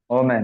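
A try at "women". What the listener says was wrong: वोमेन नहीं पढ़ना है, इसको पढ़ना है वीमेन, वीमेन, क्या पढ़ना,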